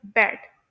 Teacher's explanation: उन्हें प्रोड्यूस करते हुए वोकल कॉर्ड्स गले के अंदर वाइब्रेट करते हैं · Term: वॉइस कॉन्सोनेंट, वॉइस कॉन्सोनेंट्स